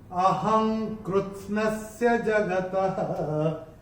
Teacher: अनुस्वार के बाद जब क आएगा तो अनुस्वार का उच्चारण होगा अंग।